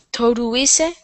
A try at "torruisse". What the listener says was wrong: Torrere, torruisse, cum duplice R.